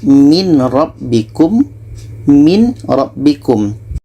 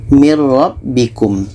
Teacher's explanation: bunyi Nun kita masukkan ke ro